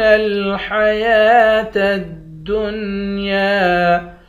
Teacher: بل تؤثرون الحیاة الدنیا، یا کے اوپر کھڑا زبر ہے، واو پر کھڑا زبر نہیں ہے، یا کے اوپر کھڑا زبر ہے، یا کو ایک الف کی مقدار کھینچ کر پڑھیں گے